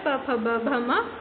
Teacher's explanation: प वर्ग जो है प, फ, ब, भ, म उन्हें हम ओष्ठ और जीभ की सहायता से उच्चारित करते हैं।